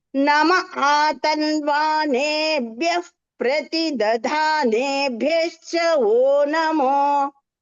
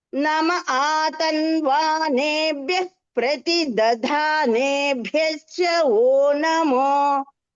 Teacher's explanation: ప్రతిదధానేభ్యశ్చలో దధాలో ధా మహాప్రాణం ఉంది, భ్యశ్చలో భా కూడా మహాప్రాణం